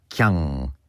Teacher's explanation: the double N at the end of things like kyan, for example, becomes an ng sound. So you have kyang.